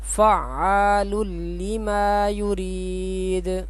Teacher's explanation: یہ تنوین ہے اور اس کے بعد لام ہے، تو یہاں پہ بھی ادغام کریں گے اور یہاں پہ غنہ بھی نہیں کریں گے